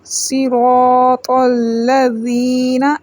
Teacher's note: صاد موٹا پڑھیں گے اور سیٹی والا حروف ہے